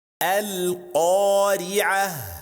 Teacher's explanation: If the word ends ta marbuta, then we stop by changing it to ha